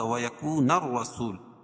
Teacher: رائے مشددہ کو پر پڑھیں گے کیوں را کی مشددہ کے اوپر زبر ہے